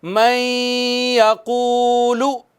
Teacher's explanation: واو مدہ ہے نا، اس کو بھی ایک الف جتنا، ادھر یہاں پہ ادغام بالغنہ بھی ایک الف جتنا اور واو مدہ کو بھی ایک الف جتنا کھینچیں گے